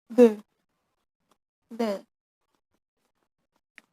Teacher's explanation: And then th sound, th sound, th. Th sound is fricative voice on dental coronal place.